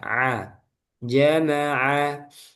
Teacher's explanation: a ditekan tengah tenggorokan ya a jamaa bunyi a-nya sama ya